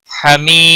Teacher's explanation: حمی یا مدہ ہے ایک الف کے برابر کھینچ کر پڑھیں گے